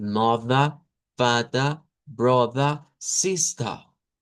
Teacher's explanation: No hay que sonar la r y que solo suene esta e como una shua. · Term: pronunciación no rótica, pronunciación británica